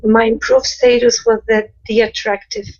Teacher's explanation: so that s moves right into that th